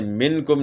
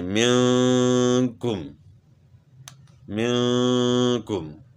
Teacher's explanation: یہاں ہم نے غنہ کرنا ہے لیکن اس طرح کرنا ہے کہ آواز ناک میں لے جا کر چھپا کر غنہ کے ساتھ ادا کرنا ہے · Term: اخفاء